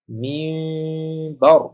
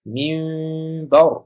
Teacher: Minbar emas, ya'ni m ni talaffuz qilayotganda lablar to'liq yopishmaydi, yaqinlashadi. Minbar bo'ladi.